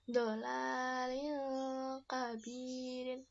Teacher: Ada kasrotain bertemu dengan ka. dia dibaca seperti huruf NG, ya. Dolalil kabirin, begitu ya.